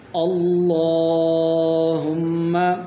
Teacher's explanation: تو یہاں پر جو ہے پہلے حرف پر زبر موجود ہے تو اس لیے اس کو موٹا کر کے پڑھیں گے، اور اس کو اس طریقے کے ساتھ پڑھیں گے، اللہم، حمزہ زبر لام مشدد ال، لام کھڑی زبر لا، اللہ، ہا پیش میم مشدد ہم، میم زبر ما، اللہم۔